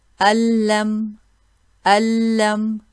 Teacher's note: You see there's no trace of noon at all. · the noon completely merges into the next letter. There is no sign of noon in the next letter. Here, allam, you don't hear the noon. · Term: idgham, complete merge of noon